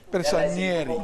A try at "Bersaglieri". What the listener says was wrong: No, there's no N. Bersaglieri.